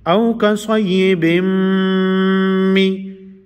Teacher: تنوین نرستو حروف یرملون کې میم دی نو بن به په بم کې بدل شي دې ته ادغام وای.